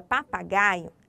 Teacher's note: Ali na palavra papagaio, a sílaba tônica gai, ela está na posição de penúltima sílaba.